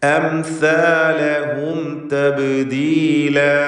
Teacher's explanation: സാ വ്യക്തമായി മഖ്റജിൽ നിന്ന് ഉച്ചരിക്കുക. നാവിൻ്റെ അറ്റത്തിൻ്റെ മുകൾ ഭാഗം, മേലെ മുൻപല്ലിൻ്റെ അറ്റം, ഇതാണ് സാഇൻ്റെ മഖ്റജ്.